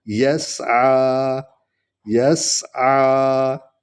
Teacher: سین سیٹی کی آواز نکلے گی، این کو تھوڑا سا لمبا کریں گے کیونکہ اس پر کھڑا زبر ہے